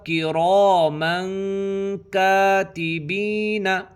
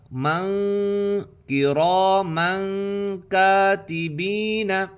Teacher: ناک میں آواز کو چھپانا اس کو اخفا کہتے ہیں